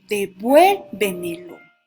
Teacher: la sílaba tónica o la fuerza de voz en la anterior a la antepenúltima sílaba. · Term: sobreesdrújulas